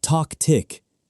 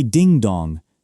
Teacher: We say ding-dong, not dong-ding. The vowel sound goes from high to low, I to O.